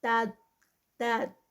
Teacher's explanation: تا لائٹ اور داد ہیوی، تو یہ تاد، تاد اس کو جو ہے وہ یہاں پر ہیوی پہ لے کے آنا ہے.